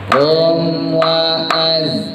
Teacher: Hum jangan ditahan lama-lama, jangan hum wa az, nggak boleh. Setelah sempurna mimnya langsung masukin ke wau. · zai nggak punya kol-kola, hati-hati jangan dipantul. Jangan az. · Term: izhar syafawi